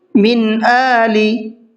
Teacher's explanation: من آلی، یہاں پر نون ساکن کے بعد میں حمزہ ہے تو اس لیے یہاں پر نون ساکن کو ظاہر کر کے پڑھیں گے، صاف کر کے پڑھیں گے